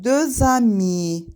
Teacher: Amma ondan sonra sait səs gələndə, bu zaman X hərfi oxunacaq, özdə Z-ya çevriləcək. Deux amis, 2 dost, 2 dost. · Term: liaison